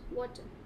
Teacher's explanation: You do not pronounce the R at the end.